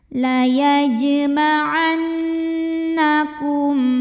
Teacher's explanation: Karena ada nun yang bertasydid, maka cara bacanya nunnya ini dengung. Bunyi n-nya tahan sampai kurang lebih 2 harokat bergetar ke hidung ya dengungannya. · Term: gunnah musyaddadah